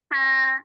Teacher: H, Ibu keluarkan hawanya dulu.